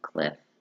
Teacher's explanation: produced by the lips and teeth these are labial dental sounds the sound is a voiceless fricative sound the sound for F is as in the beginning of fox